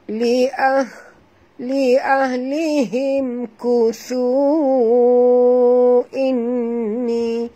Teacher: Kuthu di sini panjang 4 hingga 5 harakat kerana waw mat bertemu dengan hamzah. Ya, jadi kita kena baca panjang.